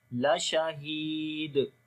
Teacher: ہا کو گلے کے سب سے نیچے والے حصے سے اور لمبا بھی کریں گے ، یا مدہ ہے اور دال کے اوپر قلقلہ کریں گے،